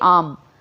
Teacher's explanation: अंत में स्वर रहित मकार का उच्चारण होकर श्वास के एक ही आघात के साथ आम बोला जाता है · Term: अक्षर